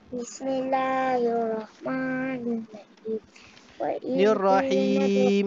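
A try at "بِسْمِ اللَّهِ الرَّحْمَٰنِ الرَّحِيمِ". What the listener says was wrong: Panjang sikit tu. Ha, ma'arid li sukun. Tadi Ana tegur bismillah tadi tak berapa betul bacaannya.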